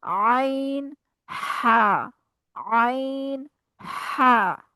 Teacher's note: जो अगले दो हैं जो दरमियान वाले हिस्से से अदा होते हैं, वो खाली हैं। आइन हा, हा अदा करते हुए गले में से हवा खारिज होगी। ठीक है, हवा निकलती है गले में से, आवाज आती है आपको हवा के निकलने की।